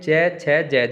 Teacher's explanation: स्पर्श संघर्षी स्वास घर्षण के साथ बाहर आती है।